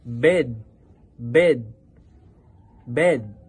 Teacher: sa mid-vowel naman, ito ay katamtamang pagbukas ng bibig.